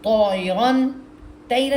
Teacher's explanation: tip of the ٹنگ، سامنے کے دانتوں میں، دانتوں کے سامنے جو مسوڑے وہاں جا کے لگے گا